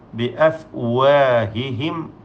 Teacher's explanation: സാക്കിന മീമിനെ മണിക്കാതെ വെളിവാക്കണം, ഇൽഹാർ ഷഫവി നൽകി.